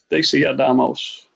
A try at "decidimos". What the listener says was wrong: You're putting another A in there. Decidimos. Let's all practice that. Let's look at how I'm doing this. Decidimos. Decidimos. Decidimos. Decidimos. Decidimos.